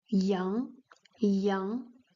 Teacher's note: with the second tone going upward